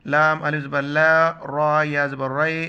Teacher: را پر جب زبر ہو، یہ زبر ہے تو را کو موٹا پڑھیں گے